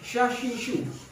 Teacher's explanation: Dan kalau lihat di sifatnya di sini termasuk yang shin adalah tafashi. Jadi berhamburannya angin di mulut. Jadi angin yang keluar itu banyak.